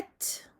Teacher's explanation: on a le souffle, l'air qui sort en même temps que le ta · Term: el-hams